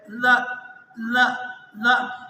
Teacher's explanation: زبان پیچھے آ جاتی ہے، بالکل مقابل میں برابر میں آ کر ٹچ کرتی ہے